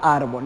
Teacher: La palabra árbol se va a dividir en dos y viene siendo una palabra grave porque tiene el acento en la penúltima sílaba.